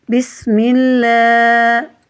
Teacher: میم کے نیچے زیر ہے تو اللہ کے لام کو باریک پڑھیں گے